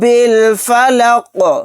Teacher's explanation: برب الفلق، برب الفلق، یہاں پر قاف کو ساکن بنا کر پڑھیں گے آیت کرنے کی صورت میں، اور یہاں پر جب قاف کو ساکن بنائیں گے تو قلقلہ بھی کریں گے